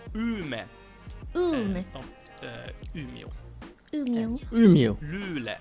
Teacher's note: you don't have that O sound at the end